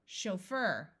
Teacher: this CH will use the French sh sound